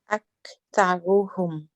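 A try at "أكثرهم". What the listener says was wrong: So good, your tha was light, mashallah, good. You then need to make, and your ra was a little bit on the light side, aren't you? So the ra we can make a little bit heavy.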